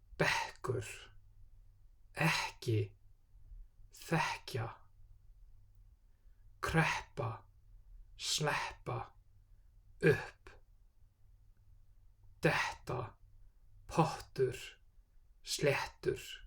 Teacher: Pre-aspiration is a distinctive feature of Icelandic pronunciation and often one of the trickiest aspects to master for learners. Before double P, T and K, there's a puff of air, sometimes described as a breathiness. It's hard to do too much pre-aspiration, but if you don't emphasize it enough, it can create confusion, so best to overdo it at first.